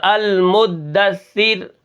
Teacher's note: یعنی یہاں پر کیا کرنا ہے، ہم نے تشدید کے اوپر رک رک کر پڑھنا ہے، المدثر، المدثر تو یہ غلط ہو جائے گا، اور المدثر را باریک ہوگی کیونکہ را ساکن کریں گے، اور پیچھے اگر زیر ہو، را ساکن ہو پیچھے زیر ہو تو وہ را باریک ہوتی ہے